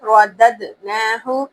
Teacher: دال پر قلقلہ لازمی کرنا ہے